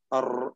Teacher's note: കൂടുതൽ തക്രീർ അർ എന്ന് വിറപ്പിക്കുക